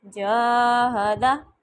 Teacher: جا لمبا کرنے کے بعد ہدا جلدی سے پڑھا ہے میں نے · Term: الف مدہ